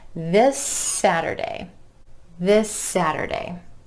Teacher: This Saturday, instead of this Saturday, comes this Saturday. That final S sound at the end of this is continuing on into the word Saturday.